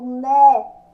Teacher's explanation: Quando eu falo né, eu abro a boca, né? Sai o som aberto.